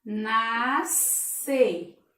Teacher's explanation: nascer, me soa como se fosse apenas um S